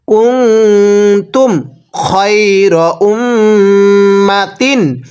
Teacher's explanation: এখানে কোনো গুন্নাহ হবে না, স্পষ্ট হবে। তানবিনের পরে ইজহারে হরফ থাকলে স্পষ্ট করে পড়তে হয়।